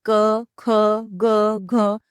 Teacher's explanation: जब आप क वर्ग को बोलकर देखेंगे, जैसे कि क, ख, ग, घ, तो आपको महसूस होगा कि क वर्ग का साउंड गले से आ रहा है, इसलिए इन्हें कंठ्य वर्ण भी कहा जाता है।